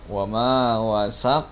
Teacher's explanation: ini juga qolqolah kubro jadi harus di pantulkan dengan jelas